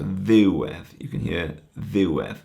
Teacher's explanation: The accent is on the ddiw, and the edd kind of just is the second part of the word.